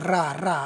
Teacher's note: रा रा बोल के देखोगे तो जीभ ऐसा लग रहा है कि कंपन कर रही हो, लुढ़क सी रही हो, इसे लुंठित कहते हैं।